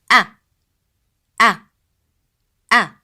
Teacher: The sound of a, as in elif, is pronounced from the lower part of throat.